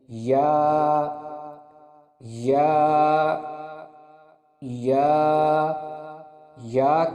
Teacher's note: یا کے مخرج کی ادائیگی زبان کے درمیان اور اوپر کے تالو کے درمیان سے ہوتی ہے